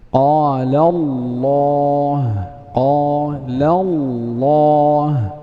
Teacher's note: إذا سبقت لام لفظ الجلالة بفتح أو ضم فحكمها التفخيم. قال الله، قال الله، إذا فخمنا لام لفظ الجلالة لأنها سبقت بفتح.